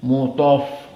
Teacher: ta di sini dari huruf isti'la, maka dia sifatnya di sini dalam keadaan at-tafkhim